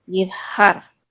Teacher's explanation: you're just constricting the muscles of your throat while you make the H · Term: Het